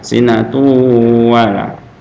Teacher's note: Jadi idgham bi gunnah. Idgham masukkan bi gunnah serta berdengung. Makanya panjang.